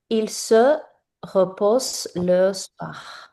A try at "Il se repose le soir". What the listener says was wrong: parfait.